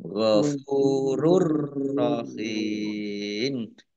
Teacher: Idgham masuk bi dengan la tidak gunnah mendengung. Jadi masuk ke huruf ro tapi tidak mendengung. · Domah tanwin bertemu dengan huruf ro, bacaan idgham bila gunnah. Idgham masuk bi dengan la tidak gunnah mendengung.